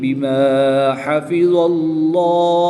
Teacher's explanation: جلالت اللہ عز و جل کے لام کو پر یعنی موٹا پڑھیں گے · ہا کی پیش کو وقف کی حالت میں ساکن کر دیں گے اور یہاں پر وقف کی حالت میں مد عارض ہوگی، 2 سے 3 الف تک کھینچ کر پڑھیں گے